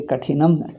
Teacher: Tha should come Mahaprana